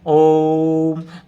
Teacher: ओ को तीन गुना ज्यादा वक्त दिया हमने तीन गुना ज्यादा समय दिया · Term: प्लुत रूप, प्लुत स्वर